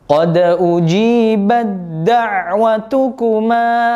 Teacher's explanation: huruf ta yang mati atau tak sukun ya, bertemu dengan huruf dal yang hidup berharokat fathah di sini, maka huruf ta-nya langsung dileburkan ke huruf dal. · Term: idgham mutajanisain